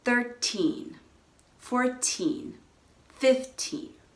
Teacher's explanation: the stress is on the teen. That's the second syllable. That means it's a little bit longer, maybe a little bit louder.